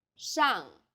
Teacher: The pronunciation for the famous city Shanghai is 上海， the first syllable here is made of an initial 诗， and a final 昂， and a fourth falling tone.